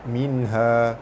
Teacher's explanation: nun mati bertemu ha, hukumnya izhar halki, dibaca terang jelas tanpa dengung